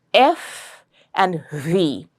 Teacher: when the air comes out of that narrow opening in your mouth, there is little bit of friction and there is also sometimes a hissing sound. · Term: fricative